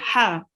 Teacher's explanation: the sound comes from the middle of your throat and again it's a throat letter